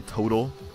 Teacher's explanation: We completely pronounce that second T with a D.